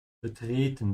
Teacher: Notice how I am stretching the middle E. Betreten, the middle E is a bit longer than the rest